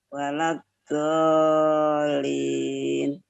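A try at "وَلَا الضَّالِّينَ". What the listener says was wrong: Nah, iya, jadi lidahnya jangan ragu-ragu, Bu, ditekan. Ditekan ya. Jangan setengah-setengah ditekan ketika waladdallin, jadinya waladdallin. Jadi itu seperti dal yang di huruf o kan. Penekanan. Waladdallin.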